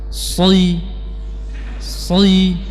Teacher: Soi di sini kita memiliki sifat itbaq yang harus kita pertahankan juga di saat kasrah.